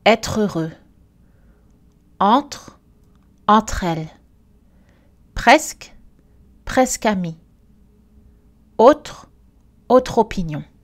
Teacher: Alors, quand c'est possible, les consonnes prononcées normalement à la fin d'un mot en isolation sont attachées au mot suivant, si ce mot commence par une voyelle. Ce transfert, c'est-à-dire cette organisation en syllabes ouvertes, s'appelle l'enchaînement.